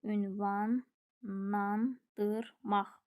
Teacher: Sözün tələffüsü olur ünvanandırmaq. Burda l n-ya keçir. Q da x kimi tələffüz olunur.